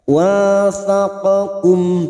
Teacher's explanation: Thaqakum, huruf qaf ini huruf isti'la, jangan samakan dengan kaf. Huruf kaf ini huruf tipis dan huruf qaf huruf tebal, huruf isti'la, maka bunyinya wathaqakum.